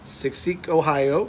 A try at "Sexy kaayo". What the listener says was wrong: Now, kaayo. No, not say Ohio is a state. Sexy kaayo.